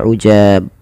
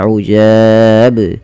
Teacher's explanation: kesalahan di dalam membaca qalqalah ini adalah tidak memantulkan huruf qalqalahnya, yaitu di sini huruf ba. Misalkan ujab, harusnya dipantulkan ujab.